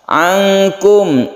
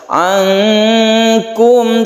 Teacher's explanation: Ankum memang terkesan suara eng ya, karena memang seperti itu. Kalau kita itu membaca nun, kemudian mulut kita itu bersiap membaca kaf, itu maka terbentuk suara eng, khususnya huruf kaf dan huruf qaf. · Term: ikhfa hakiki